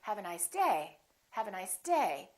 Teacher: So my voice is still going down even though I'm stressing the word. The pitch is still down.